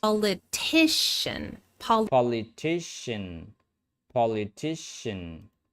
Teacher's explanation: The primary stress comes immediately before the suffix.